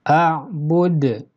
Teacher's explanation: qalqalah kubro bila dibaca wakof. Sebab huruf qalqalah yaitu dal sukun karena diwakofkan. Sedangkan bila disambung tidak terjadi hukum qalqalah.